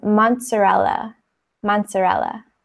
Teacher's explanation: Those two Z's kind of have like a T sound.